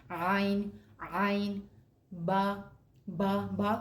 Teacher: عین جو ادا ہوتا ہے وہ حلق کے درمیان سے ادا ہوتا ہے · با دونوں ہونٹوں کی اندرونی تری کے ملنے سے بنتا ہے